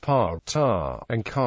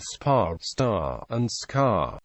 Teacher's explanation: the flame will flicker more after the words pa, ta, and ka are articulated, compared with spa, star, and ska.